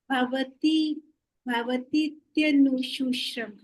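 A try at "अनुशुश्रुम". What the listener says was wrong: Anushushrum. Come on, don't turn it into Hindi. Anushushrum. I know there's this sometimes almost irresistible temptation among the Hindi speakers, but remember the Sanskrit demands the final Anushushrum.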